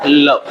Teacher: ऐसा वर्ण जिसके उच्चारण में जिह्वा ऊपर उठ जाए और उस जिह्वा के दोनों किनारे से हवा निकल जाती हो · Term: पार्श्विक व्यंजन